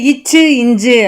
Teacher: நாவின் இடைப்பகுதி நடு அன்னத்தின் இடைப்பகுதியை பொருந்துவதால் இச்சு இஞ்சு வந்து பிறக்கின்றன